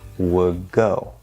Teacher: instead of doing that D, you can just do a G, would go.